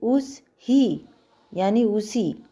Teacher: यहां किसी ध्वनि का लोप हो जाता है जैसे उस ही यानी उसी ह का लोप है यहां पे ह का लोप है स की आवाज आ रही